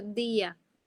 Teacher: cuando yo pronuncio día, se sienten separadas la I y la A. En ese caso hay un hiato, son sílabas distintas. La di es una sílaba y A es otra.